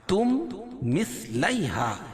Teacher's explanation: यानी मीम का मीम में इदगाम होगा तो उसको इदगाम मिसलैन भी कहेंगे मखरज और सिफात के लिहाज